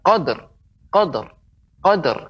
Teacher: Ini bisa dipantulkan qadr, qadr, qadr, karena dal adalah huruf apa? Huruf qalqalah.